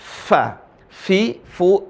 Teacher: ada Fa ada Fanya dialirin nafasnya